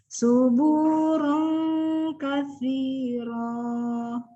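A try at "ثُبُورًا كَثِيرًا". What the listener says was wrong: Kasihnya benar, su-nya lupa lagi kalau itu adalah su. Ayo, lidahnya nggak keluar tadi. Harus lebih konsisten kalau ketemu sa, lidahnya memang otomatis harus keluar.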